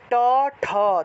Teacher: ট উচ্চারণ করলেই জিউভাটাকে উপরে উপরের মূর্ধাতে লাগাতে হয়